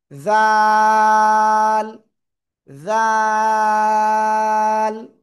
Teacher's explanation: জিব্বার আগা উপরে দুই দাঁতের আগায় লাগান লাগান লাগান, লাগিয়ে 1 2 3 আলিফ টানবো।